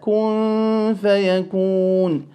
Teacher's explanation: The noon sakin will be read with concealment regarding the fa.